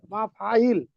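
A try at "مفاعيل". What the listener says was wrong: মাফাইল, শেষেরটা একটু টান দিবেন, ঠিক আছে?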